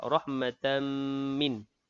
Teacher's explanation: tanwin bertemu dengan mim. Idghamah al-ghunnah, dengung dua harakat